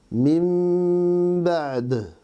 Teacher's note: Dans le mot min, il y a un nun sakina et la première lettre de ba'di est un ba. Donc nous changeons le nun en mim avec ikhfa, c'est-à-dire un mim dissimulé